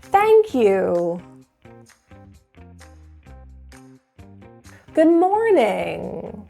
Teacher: notice there is an up but the point here is that you're going down at the very end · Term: downward intonation